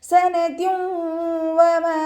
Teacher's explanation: തെൻവീനിലുള്ള നൂനിനെ വാവിലേക്ക് ലയിപ്പിച്ച ഒന്നയോടുകൂടി ഓതി കൊടുക്കാൻ ശ്രദ്ധിക്കണേ. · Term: ഇദാം ബിഉന്ന